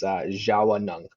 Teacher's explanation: in some dialects in our language, there's an A in between the W and the N